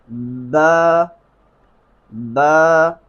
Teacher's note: تو با کا صحیح طریقہ ادائیگی کیا ہے؟ با کو شدت کے ساتھ پڑھنا ہے، دونوں ہونٹوں کی تری والی جگہ سے با ادا ہوتی ہے